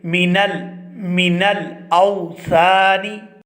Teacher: جو نون ہے وہ بغیر تشدید کے ہے اور اس پر بھی غنہ آنی ہو رہا ہے، ہم اس کو جلدی سے ادا کریں گے